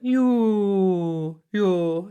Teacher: you basically just take whatever the vowel is ooh and open it up a little bit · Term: vowel modification